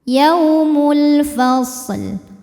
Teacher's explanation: Alif lamnya dinamakan dengan alif lam qamariyah sebab alif lam menghadapi huruf qamariyah yaitu fa, maka lam dibaca jelas, idhar qamari.